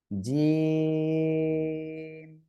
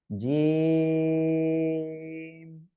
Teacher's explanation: জিহ্বার মধ্যখান, তার বরাবর উপরে তালুর সাথে লাগিয়ে আমরা এই অক্ষরটা উচ্চারণ করব এবং তিন আলিফ টেনে পড়বো।